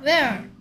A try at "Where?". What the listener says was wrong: 얼 소리 못 내요. 얼 소리. Where?